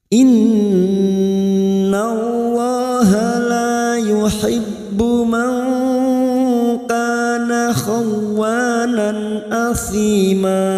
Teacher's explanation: Nun yang bertasdid gunna musaddadah kita dengungkan selama dua atau tiga harokat